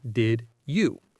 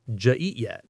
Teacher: The D and Y sounds combine to make a J sound.